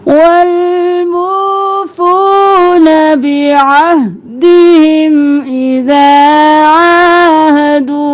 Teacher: عین کھڑی زبر ایک الف کے برابر کھینچنا ہے عین کو گلے کے بالکل درمیان سے نکالنا ہے.